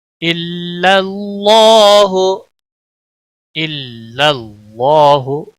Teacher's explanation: اللہ کے لام کو موٹا پڑھیں گے کیونکہ اس میں جلالہ کا نام جہاں پر بھی ہے اس کے پچھلے حرف کے اوپر جب زبر یا پیش ہو تو پور پڑا جاتا ہے، اور جب زیر ہوتی ہے تو باریک پڑا جاتا ہے۔